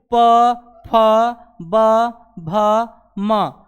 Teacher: इन पांचों वर्णों को जब बोलेंगे तो हमारा जो दोनों ओष्ठ होता है वह आपस में चिपकता है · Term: प वर्ग